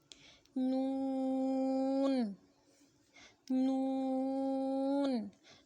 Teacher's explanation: زبان کی کروٹ کے آخر سے زبان کی نوک تک کے حصے سے جب وہ اوپر کے اگلے دانتوں کے مسوڑوں سے لگے تو نون ادا ہوتا ہے